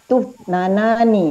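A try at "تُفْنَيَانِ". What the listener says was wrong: Bukan tufnana. Ada ya-nya mana ya-nya?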